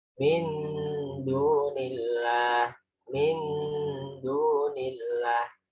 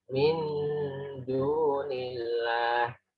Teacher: Jadi min itu lebih panjang dari du. Du-nya 2, min-nya lebih panjang. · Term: ikhfa